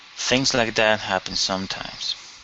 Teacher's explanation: So we're going to come down on sometimes